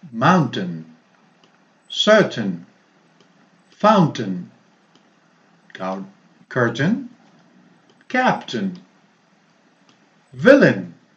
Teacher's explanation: The AI sounds like schwa, mountain, certain, fountain, curtain, captain, villain. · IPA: ə